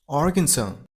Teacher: You gotta stress on the very first syllable, R, and the last S isn't pronounced